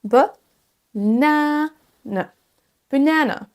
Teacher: Banane. L'accentuation se fait sur la deuxième syllabe, elle traîne un petit peu, donc c'est le seul son A qui se prononcera comme un A dans ce mot.